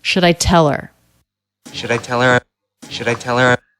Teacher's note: The word should, I would say is, I would write that with a schwa, should I. The D is a flap sound because it comes between two vowels or diphthongs. The L is silent here.